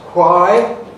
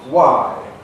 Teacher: And this is the simplification of wh cluster